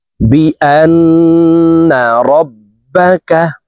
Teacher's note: আন এখানে ওয়াজিব গুন্না, হরকতের বামে নুনে মিমে তাসদিদ হইলে সর্ব অবস্থায় নাকের বাসি থেকে গুন্নাহ করিয়া পড়িতে হয়। তো এই হামজা তাসদিদওয়ালা নুনের সাথে নাকের বাসি থেকে 3 সেকেন্ড পরিমাণ গুন্নাহ করে ধরে রেখে পড়ব।